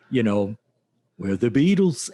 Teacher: And when you think of Liverpool, like most people just know about the lilt, like the Beatles lilt. So when they impersonate the Beatles, it's just everything goes up at the end.